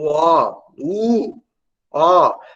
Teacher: para pronunciar o som do O, U, O, a língua ela vai para o fundo da boca